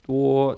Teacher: Do, D-U-O, is first tone, straight across. Do, so you just hold your tone.